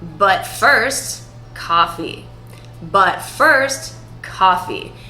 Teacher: Can you hear how the note goes down? The pitch in my voice goes down.